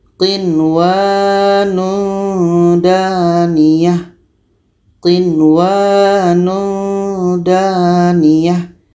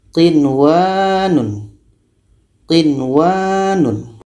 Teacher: Jadi ini tidak dengung, nun jelas, wa pun jelas. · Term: izhar wajib